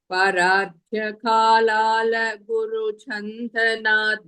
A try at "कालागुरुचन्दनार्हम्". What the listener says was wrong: Kalala is not the Kala Guru.